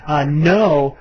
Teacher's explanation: Almost all the vowels are diphthongs. No is almost ah-oo.